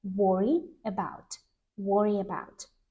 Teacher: And my emphasis is on the preposition.